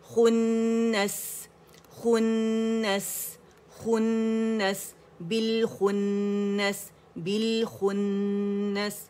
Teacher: نون کو موٹا نہیں کریں گے خواہ کی وجہ سے، اور خواہ کو نون کی وجہ سے باریک نہیں کریں گے